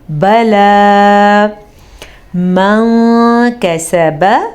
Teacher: یاد رکھیں یہاں پہ ہمارے پاس تجوید کا ایک قاعدہ ہو رہا ہے جس کے حساب سے جب بھی نون ساکن کے بعد والا حرف حروف اخفاء میں سے ہوگا تو ہم نون ساکن کی آواز کو چھپا کے پڑھیں گے